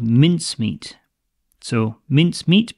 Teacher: mince meat but stress on the mince part